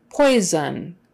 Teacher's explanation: that middle s is a z sound